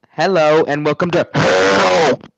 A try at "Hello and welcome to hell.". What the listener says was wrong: You say welcome to hell. It sounded like you said welcome to ho.